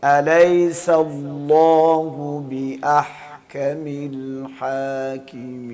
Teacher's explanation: لفظ اللہ سے پہلی زبر ہو، پیش ہو، لفظ اللہ کو موٹا پڑھیں گے، منہ بھر کے پڑھیں گے